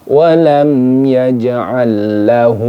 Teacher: ini sama kayak tadi hamdu ya ini disebut dengan izhar syafawi jadi dibaca jelas mim sukunnya tidak boleh didengungkan